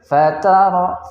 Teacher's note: ada ra sukun sebelumnya huruf ta-nya yaitu berbaris fathah, maka dibaca dengan bacaan yang tafkhim atau dibaca dengan bacaan yang tebal.